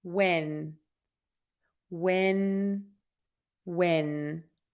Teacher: the n sound that ends the word when you are going to touch the back of your top front teeth where your teeth meet the skin on the roof of your mouth